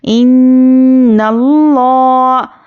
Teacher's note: حمزہ نون زیر ان، نون لام زبر نل، تو یہاں پر دیکھیے نون پر تشدید ہے تو یہاں پر ہم غنہ کریں گے